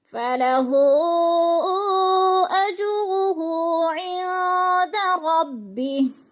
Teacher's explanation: فَلَهُ أَجْرُهُ عِندَ رَبِّهِ، عین پہ اخفا ہو رہا ہے، نون ساکن کے بعد دال حروف اخفا میں سے آ گیا ہے تو اخفا کریں گے. اخفا کا معنی ہوتا ہے کہ لفظ کو ناک میں چھپا کر پڑھنا